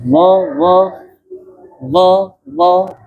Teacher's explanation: pengucapan huruf D yaitu dengan menyempurnakan menempelkan ujung lidah ke ujung gigi atas